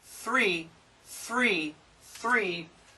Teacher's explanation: the tongue is between the teeth okay so this is your th sound